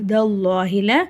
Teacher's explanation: அல்லாஹ்ன்ற வார்த்தைக்கு முன்னாடி ஜபர் வரதுனால அல்லாஹன்ற வார்த்தையை நம வல்லினமா ஓதணும்